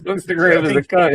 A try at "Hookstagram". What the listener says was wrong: I think you need to say the whole name because it sounds like you said grandma is a cunt.